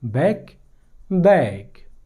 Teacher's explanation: बैक, बैक के आखिर में के आए है और के एक वॉइसलेस कॉन्सोनेंट है, क्योंकि यहाँ पर हमने किसी वाइब्रेशन को महसूस नहीं किया, ये एक वॉइसलेस साउंड है। ओके, तो जब भी किसी वर्ड में वॉइसलेस कॉन्सोनेंट आ जाए तो उसका वावल लेंथ जो है वो थोड़ा शॉर्ट होता है